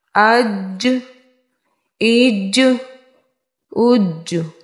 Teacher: حرف قلقلہ جب ساکن ہو تو ان میں قلقلہ خوب ظاہر ہوگا، تو یہاں پہ جیم میں قلقلہ ظاہر کر کے پڑھیں گے